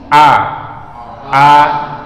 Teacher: karena huruf hamzah itu tempat keluar hurufnya adalah tenggorokan kita